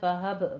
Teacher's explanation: वाहब में बा पे कलकला करना है